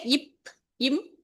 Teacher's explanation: மேல் உதடும் கீழ் உதடும் அது தான், அதுக்குள்ளார இதழ் இயைந்து அது பொருந்துது, ரெண்டும் வந்து ஒட்டிக்கிட்டு தம்முள் பொருந்துறதுனால பகாரம் மகாரம் பிறக்கும்